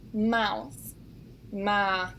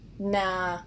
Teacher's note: With the diphthong ow, it sometimes gets changed to an ah sound.